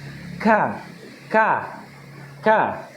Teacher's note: bunyi huruf K seperti huruf qaf, namun pangkal lidah diturunkan